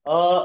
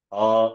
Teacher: ಹೀಗೆ ಮೇಲೆ ಕೆಳಗೆ ಸ್ವಲ್ಪ ಟೋನ್ ಅನ್ನ ಅಪ್ ಅಂಡ್ ಡೌನ್ ಮಾಡಿ ಪಿಚ್ ಗಿಂತ ಮೇಲೆ ಕೆಳಗೆ ಹೇಳಿದ್ರೆ ಅದಕ್ಕೆ ಒಂದೊಂದು ಹೆಸರು. ಮೇಲೆ ಹೇಳಿದ್ರೆ ಉದಾತ್ತ, ಕೆಳಗೆ ಹೇಳಿದರೆ ಅನುದಾತ್ತ.